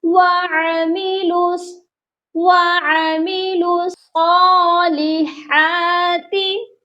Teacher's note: ان چاروں حروفوں کو ہم نے چھوڑ دینا ہے، لام کو ڈائریکٹ صاد کے ساتھ ملانا ہے